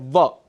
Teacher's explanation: दंतोष्ठ, जहां पर दांत और ओंठ बहुत जरूरी हो, वो उच्चारण, वो वर्ण है व